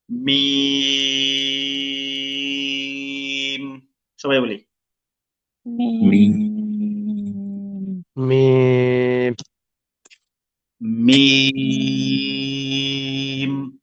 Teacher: এটা পড়তে হবে 3 আলিফ টান দিয়ে, তাই মানে 3 সেকেন্ড পরিমাণ টানতে হবে।